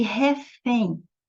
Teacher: a última sílaba é a mais forte Então você está diante de uma oxítona e ela termina por